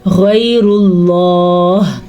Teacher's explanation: یہاں پہ بس غین بھی پر پڑا جائے گا اور یا ہے لین، اس کو لمبا نہیں کریں گے، یا ساکن سے پہلے زبر ہے. را کو پر پڑیں گے کیونکہ را کے اوپر پیش ہے، زبر اور پیش کی صورت میں را پر پڑی جاتی ہے. · را کو پر پڑیں گے کیونکہ را کے اوپر پیش ہے، زبر اور پیش کی صورت میں را پر پڑی جاتی ہے. لفظ اللہ کو پر پڑیں گے کیونکہ لفظ اللہ سے پہلے بھی پیش ہے